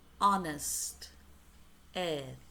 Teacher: We don't pronounce the H. So the sound begins with a vowel